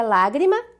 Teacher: Lágrima, proparoxítona, acento na antepenúltima sílaba, o lá